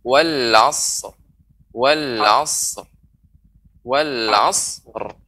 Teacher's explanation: Tidak boleh sad dipantulkan.